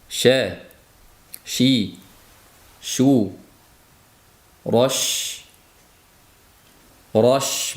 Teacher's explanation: O'zbek tilimizda she tilimizning uchiga yaqinroq joydan she bo'lib chiqadi. She bu ash sal orqoroqda ya'ni tilimizning o'rtasidan talaffuz qilinadi.